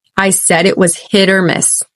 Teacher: because the stress is on hit you could almost barely hear that t running into the O that follows